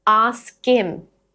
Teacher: The h or h drops. We take the k from ask, link it to in.